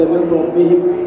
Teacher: انما هي ظاهره مع حروف الحلق واذا قلت من ربهم فادمت صار مخرج النون من مخرج الراء لانك ابدلت منها راء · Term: الادغام